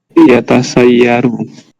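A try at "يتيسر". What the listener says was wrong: kebalik sin sama ya yatayassaru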